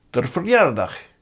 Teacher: in everyday speech, unstressed haar is pronounced der